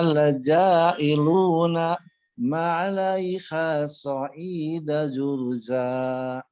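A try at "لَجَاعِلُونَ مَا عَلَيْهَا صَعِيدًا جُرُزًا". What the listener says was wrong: Nah, so'idang sampai jurusnya sudah bagus. Cuman na-nya masih berhenti nih, Pak. Jadi dari na ke ma-nya sambungan ya. Lajailuna ma gitu coba.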